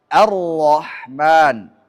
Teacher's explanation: lam masuk pada ro, lamnya tidak tampak lagi